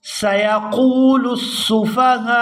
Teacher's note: یہاں قاف کو واو ساکن کے ساتھ ملائیں گے تو کھینچ کر ادا کریں گے، قاف واو پیش کو۔